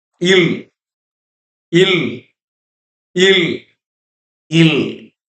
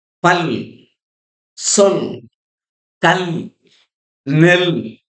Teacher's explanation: ill is produced by bringing a tight contact between the tip of the tongue and the upper teeth ridge and sounding